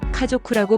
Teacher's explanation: 조를 목을 울려 발음해야 합니다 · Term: 타금